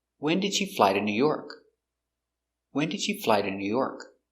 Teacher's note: It's an information question, so the intonation goes down at the end.